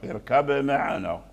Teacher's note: يدخل في الأضعف في الميم، فأظهروا من هذه الناحية اركب معنا، وقلقلوا الباء لأن لا بد من قلقلة الباء لمن أراد أن يقرأ بوجه الإظهار